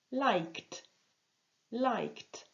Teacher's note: like se termine par un son qui est non vibrant